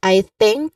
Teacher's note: stress on think and then clear th sound clear voiceless th sound